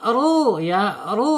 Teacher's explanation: ru harus dibaca tebal ya karena apa karena harakatnya domah